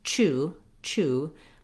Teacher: make sure that you're saying it quickly you have a nice oo vowel there nice rounded vowel you can think about that as ooh as well if that